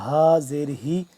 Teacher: یہ والا جو ہا ہے حلق کے آخری حصے سے ادا ہوتا ہے اور سینے کے پاس سے